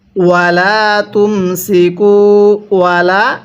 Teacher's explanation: লামের মধ্যে এক আলিফ টান দিব